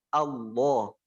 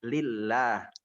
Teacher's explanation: dibaca tafkhim dengan vokal o, Allah. Ketika tarqiq dengan vokal a, lillah.